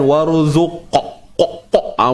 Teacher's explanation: Huruf qaf ni qalqalah sughra. Kita lantunkan bersahaja, santai, relax. Tak perlu kita tekan-tekan.